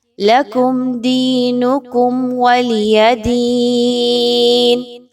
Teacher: لکم میم ساکن کے بعد حرف دال آ رہا ہے، اظہار شفوی کی طرف نشاندہی ہے، آپ نے یہاں پہ غنہ بالکل بھی نہیں کرنا۔